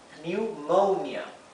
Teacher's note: la o como está seguida de una n y una vocal como siempre es el sonido largo de la O